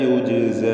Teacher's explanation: ജീമിൻ്റെ സുക്കൂൻ ഖൽഖല സുഗ്റ നൽകി ശബ്ദം ഹറക്കത്ത് പോലെ ചലിപ്പിച്ച് വ്യക്തമാക്കണം.